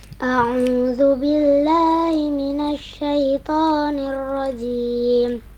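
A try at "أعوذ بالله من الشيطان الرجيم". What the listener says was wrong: Ini suaranya lembut ya. Ini bagus. Tinggal ditekan dikit lagi ya. Tekan dikit lagi pengucapan hurufnya dan intonasi suaranya sehingga lebih jelas. A'udzu billahi lahi ya. A'udzu billahi minasy syaithanir rajim. Tanir rajim ya. Ta. Tidak tanir rajim itu kurang penekanannya.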